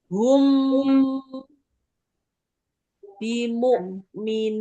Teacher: posisi hum itu mecucu terus ada mundur bibirnya